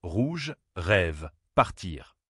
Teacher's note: Le R français est produit au fond de la gorge, en faisant vibrer la luette, l'arrière de la bouche. C'est un son guttural, qui n'existe pas dans beaucoup de langues. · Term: Le son R